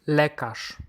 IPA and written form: ˈlɛ.kaʂ (lekarz)